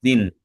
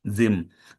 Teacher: So, the process that takes place there is that you will have to change the noon to a mim in your pronunciation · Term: iqlab